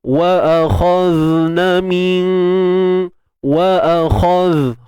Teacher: Kha tebal, wa akhaz. Matikan zal dengan kekalkan ar-rakhawah, suara mengalir.